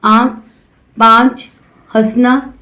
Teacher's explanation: इसका उच्चारण मुंह और नाक दोनों से होता है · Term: अनुनासिक